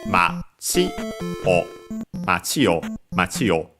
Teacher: we would hear the accent on the last syllable, and so low, high, low